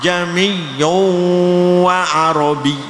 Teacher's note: Membaca hamzah dibaca antara hamzah dan alif. Hamzah yang kedua dari lafal a ya, itu dibaca antara hamzah dan alif. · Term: tashil